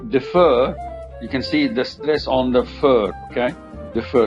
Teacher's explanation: you can see the stress on the fur